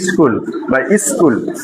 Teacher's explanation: স্কুলের ই আসতেছে না প্রথমে স্কুল তাহলে সেই ইটাই কিন্তু এখানে আসছে এইযে স্কুল তাহলে এটা কি হল আদিতে এটা ছিল শব্দ শব্দের আদিতে একটি সরধনি যুক্ত হয়েছে সেই কারণে এটি আদি সরাগম।